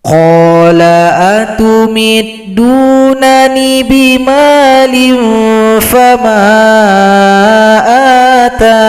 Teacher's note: Cara berhenti yang kedua, boleh juga huruf ya ini kita hilangkan, tidak usah dibaca, maka yang kita sukunkan adalah huruf nun, maka huruf ta menjadi mad arid disukun, panjangnya 4 sampai 6 harokat. Kita panjangkan 4 harokat.